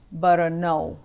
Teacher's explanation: even though the transliteration ends with the m with a little curly q on the top U it's actually a nasal sound